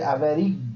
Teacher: É o E que eu estendo na minha pronúncia, significando que o E aqui do meio é uma vogal. Eu confirmo que o U eu pronuncio mais bem fraquinho, eu confirmo que o I eu pronuncio mais bem fraquinho, significando que essa sequência vai me dar uma classificação de tritongo.